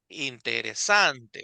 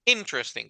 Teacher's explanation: En inglés justamente es la primera sílaba la que tiene la fuerza de voz. Entonces es interesting, como que si la I principal, la primera tuviera una tilde, ¿verdad?